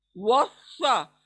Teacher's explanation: सात को मोटा पुर करते हुए वस्सा। आपका मुंह गोल होगा जब अदा करते हैं, सिंपल नहीं पढ़ना है।